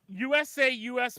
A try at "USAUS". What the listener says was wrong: yes, but your inflection is wrong. It's USAUS.